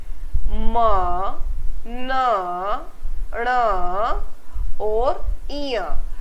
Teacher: हवा नासिका यानी नाक से निकलती है, उसे हम नासिक्य व्यंजन कहते हैं। इसमें म, न, ण और इय, ये हमारे नासिक्य व्यंजन 4 होते हैं, यानी हर वर्ग का 5वां व्यंजन, 5वां वर्ण, वो नासिक्य व्यंजन की कैटेगरी में, श्रेणी में रखा जाता है।